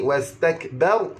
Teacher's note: di sini wastakbaru, ba berbaris fathah, maka ra itu ra tebal